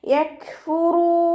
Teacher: കാഫ് സുക്കൂനാവുമ്പോൾ കുറച്ച് air pass ചെയ്യുന്ന സൗണ്ടോടുകൂടി ഉച്ചരിക്കുക.